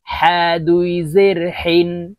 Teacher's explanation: হার উচ্চারণ হলকের মধ্যখান থেকে উচ্চারণ করতে হবে, হার মখরাজ হলকের মধ্যখান থেকে হবে